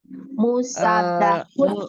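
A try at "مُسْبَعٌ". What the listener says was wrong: Jangan pakai tasdid. Jangan pakai tasdid. Musba'un. Musba'un ya. Ini bacanya musba'un.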